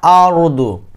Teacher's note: এখানে কিন্তু আমি মোটা করছি কারণ র এবং দ হরফ হচ্ছে মোটা হরফ